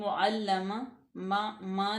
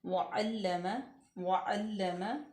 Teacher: नाक में आवाज़ नहीं लेके जाएंगे, बिल्कुल वाज़िया करके ज़ाहिर करके वअल्लम वअल्लम लाम को सख्ती से पढ़ेंगे।